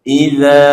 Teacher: zal ha dia kena keluar lidah sikit